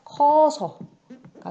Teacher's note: 용언의 어간 으가 뒤에 어서 할 때 어와 만나서 탈락되는 경우 으 탈락이 일어나서 커서가 된다